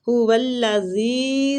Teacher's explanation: زی کو نرمی کے ساتھ کھینچیں گے، یا مد ہو رہی ہے